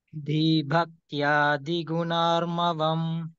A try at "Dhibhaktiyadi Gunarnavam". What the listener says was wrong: So when you say dhi, it should be uttered in stress manner. Dhi, bha, right? Dhi bhaktiyadi gunarnavam.